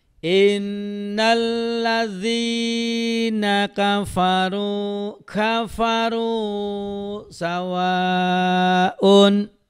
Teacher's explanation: dal besar ya, istilahnya dal besar. Jadi lidahnya agak digigit.